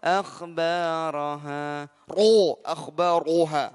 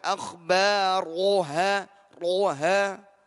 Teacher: Ini ro ini tebal, baru sempurna.